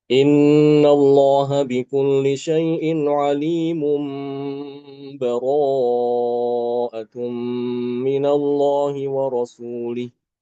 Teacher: Tanwinnya diiklabkan diubah menjadi mim kemudian ditahan gunahnya. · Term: iqlab, hukum iklab